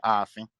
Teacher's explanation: that ga is gone. It has reduced to a W, right? Or just totally deleted altogether to a double A. So now you have like a stretched A. You would say Aafin instead of Agofin, for example.